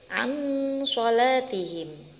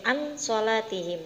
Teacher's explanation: nun sukun bertemu dengan huruf shod maka membacanya harus samar atau mendengung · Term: Ikhfa